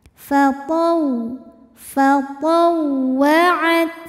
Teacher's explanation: Huruf ta dari segi suara syiddah, suaranya kuat. Makin ditekan ke makhrajnya makin gak bunyi ya. · Fatau, ada waw tasdid, tidak didahului tanwin ataupun nun sukun, maka jangan ditahan karena ini bukan idgham bil gunnah. Waw tasdid cukup dibaca menggunakan nabar, artinya kita meninggikan intonasi suara kita.